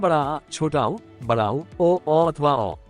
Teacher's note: जिन्हें जीभ के पिछले भाग से बोला जाता है, जैसे बड़ा आ, छोटा ऊ, बड़ा ऊ, ओ अथवा औ। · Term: पश्च स्वर